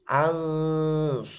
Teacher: Kalau sin tadi itu sifatnya istifal, jadi harus dijelaskan tipisnya insiya. Kalau shad ini sifatnya isti'la, jadi harus didorong maju.